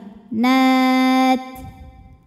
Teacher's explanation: di belakangnya ada hams, keluar angin.